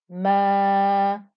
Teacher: I've elongated the ah noise to make it a two count stretch it's a two count stretch just like we had a two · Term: 2-count stretch